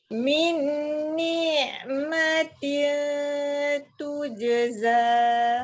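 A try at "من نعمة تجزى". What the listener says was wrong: Min ni'matin. Jangan seolah-olah ada ya pula kat situ.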